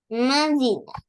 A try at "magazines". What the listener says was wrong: Magazines. So adding S, this one.